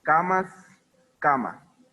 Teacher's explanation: la pérdida de la S absoluta